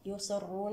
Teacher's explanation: الراء هنا مفخمة لأنها مضمومة الصاد يصرون الصاد هنا تفخيمها من الدرجة الخامسة لأنها جاءت مكسورة